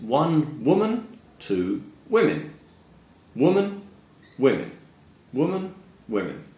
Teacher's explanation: If it's a singular noun, we would say woman, woman. However, when it turns into plural, 2 or more, we say women. So the O sound actually ends up sounding more like an I